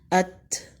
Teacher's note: حمزہ زبر تا ساکن، ات۔ زبان کی نوک اوپر کے 2 دانتوں جسے ثنایا علیہ بھی کہتے ہیں کے اندر جڑ سے لگ رہی ہے۔ حمزہ زبر تا، ات۔